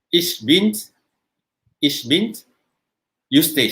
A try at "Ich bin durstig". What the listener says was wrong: Durstig. Durstig. D. It starts with a D, Denmark. Durstig. Durstig. Durstig.